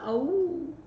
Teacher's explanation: औ, इसमें कंठोष्ठ है इसका उच्चारण स्थान। वायु तो आती है कंठ से और होंठ भी गोल हो जाते हैं